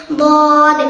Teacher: জিহ্বার গুড়ার কিনারা উপরের মাঝের দাঁতের গুড়ার সঙ্গে লাগাইয়া